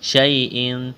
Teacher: یا ساکن سے پہلے زبر ہے، یا لین ہے، بغیر کھینچ کے پڑھنا ہے